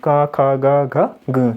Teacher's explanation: तो सबसे पहले क्या आएगा, कंठ आएगा। और कंठ से जिन वर्णों का उच्चारण किया जाता है उन्हें हम क्या बोलते हैं, कंठया